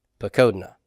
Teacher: And the 2FP is p, code, na. Pakodna, with the accent on the kof.